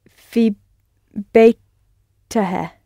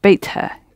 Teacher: You don't need the helping vowel because you've only got one consonant sound at the end of beit.